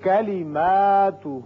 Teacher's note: ما کو بھی اتنا کھینچا اور ہو کو بھی اتنا ہی کھینچا، یعنی الف کے برابر اس کو کھینچا اور واو مدہ کے برابر اس کو کھینچا